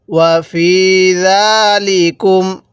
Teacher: ফায়ের মধ্যে এক আলিফ টান, কারণ জেরের পরে ইয়া সাকিন, জেরের পরে ইয়া সাকিন থাকলে এক আলিফ টেনে পড়তে হয়।